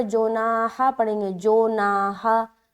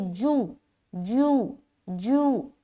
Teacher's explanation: جناح، یہاں پر دیکھیں بیچ میں بھی الف مدہ ہے۔ جیم کی آواز کو معروف رکھیں گے، مجہول نہ ہونے پائے